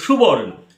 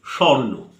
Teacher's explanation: তাহলে সু, উ আসছে, এই উটা লোপ পাচ্ছে, স্বর্ণর সময় ওটা থাকছে না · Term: মধ্য স্বরলোপ